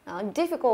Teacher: Chúng ta nhìn đây sẽ thấy là có 3 âm tiết và chúng ta sẽ nhấn vào cái âm tiết thứ nhất